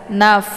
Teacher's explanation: Posisi huruf fa ini keluarnya daripada bibir bawah sebelah dalam bertemu dengan ujung gigi seri bagian atas. Naf. Jadi dibacanya secara dialirkan, bukan dipantulkan.